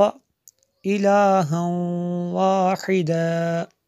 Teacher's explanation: تنوین کے بعد واو رفع یرمالون میں سے، اس لیے میں نے یہاں پہ غنہ کیا، یہاں پہ ادغام ہوتا ہے